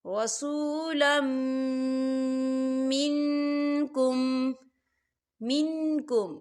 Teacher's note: اور میم جو ہے حروف یرملون میں سے ہے تو یہاں پر ادغام ہوگا، اسے ہم غنے کے ساتھ پڑھیں گے۔ · رسولا منکم، منکم، یہاں دیکھیں نون ساکن ہے، نون ساکن کے بعد کاف آ رہا ہے، اور کاف جو ہے اکفا کا ورڈ ہے تو یہاں پر اکفا ہوگا، ہم نون ساکن کی آواز کو ناک میں چھپائیں گے